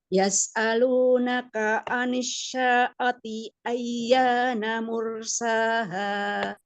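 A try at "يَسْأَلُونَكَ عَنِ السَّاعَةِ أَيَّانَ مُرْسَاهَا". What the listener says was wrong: Sini pakai sini yang tipis, coba. Yas'alunaka 'anis sa'ati ayyana mursaha. Kurang sinnya kurang sofir ya.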